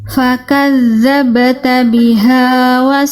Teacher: Kafnya dipercikkan dengan jelas ya. Jangan sampai enggak dipercikan. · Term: kaf sukunnya